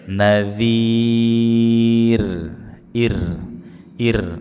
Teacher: sebelum sukun hurufnya berharakat kasrah maka r-nya dibaca dengan tarqiq tipis